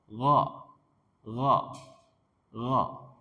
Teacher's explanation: gha ini juga kayak kha tempat keluarnya tenggorokan atas.